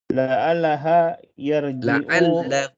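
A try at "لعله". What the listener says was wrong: la'allahu bukan la'allaha.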